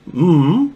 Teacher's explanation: So, for example, if we're doing me, the E formant is very close, is relatively close, closer to the lips.